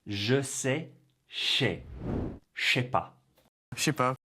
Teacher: He doesn't say je ne sais pas as it is written. He drops the ne and the je and the sais blend to become che.